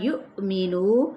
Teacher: یہاں پہ حمزہ ساکن ہو جائے گا تو کیا ہوگا، جھٹکا دیا جائے گا